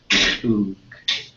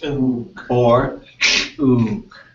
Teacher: you're squishing your tongue and you're pushing the sounds out the side of your mouth without using any air from your lungs.